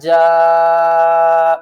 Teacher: والذی، لام کے اوپر سختی کرنی ہے، نون زبرنا، والذین، جیم الف مد زبر جا، بڑی مد ہے 3 سے 5 الف کی مقدار کھینچ کر پڑھیں گے